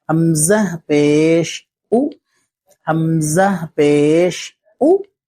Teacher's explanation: یہ جو ہوٹ ہے نا یہ گول ہو جائیں گے